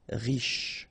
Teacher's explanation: Final not really pronounced, so sh is the last sound.